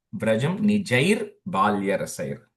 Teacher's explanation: It's a visarga nijaihi only, but the joining ir takes ir sound.